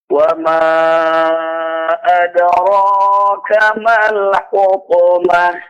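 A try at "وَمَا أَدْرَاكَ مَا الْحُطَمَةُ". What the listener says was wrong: Nah, di huruf H-nya Pak lebih jelas al-hu fil hutamah mal hutamah. Hanya tetap dipertahankan ya. Tamar buto berubah menjadi H sukun ketika berhenti.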